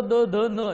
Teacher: जिभेचं टोक दाताच्या आतल्या बाजूला लागतं